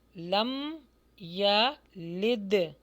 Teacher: یہاں پر دال کے ساتھ جو ہے وہ کسرہ ہے تو اس کو باریک پڑھیں گے